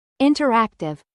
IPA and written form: ˌɪntərˈæktɪv (INTERACTIVE)